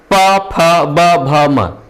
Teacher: आप जब प फ ब भ म पढ़ते हैं, प फ ब, आपका जो ओठ है ये चिपकेगा, नहीं तो आप नहीं बोल सकते। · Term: ओष्ठ